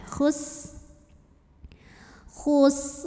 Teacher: khus sinnya tipis ada desis karena punya sifat yang khusus yaituofir ada desisan seperti suara ular